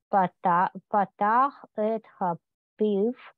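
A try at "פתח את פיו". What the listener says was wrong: Нет, ха, просто патах эт пив.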